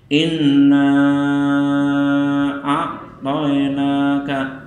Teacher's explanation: Kemudian lafaz inna a'toinaka dibaca panjang 5 harokat.